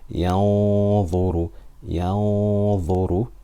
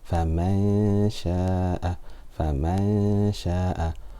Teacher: The يَنظُرُ is full and فَمَنْ شَاءَ is light because dha is a full mouth letter. So do remember, when we do ikhfa, if the letter after the noon sakina or tanween is a full mouth letter, then the ghunna will be full mouth.